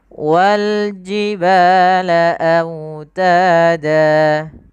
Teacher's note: Kemudian autada, pada lafal autada lafal wawnya lembutkan karena dia bacaan lin, sambil dimonyongkan sedikit bibir kita ke depan.